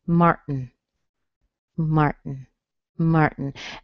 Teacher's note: what you end up with is your tongue on your teeth to make the T, Mart, and then don't move it, make the N, Martin, Martin, Martin.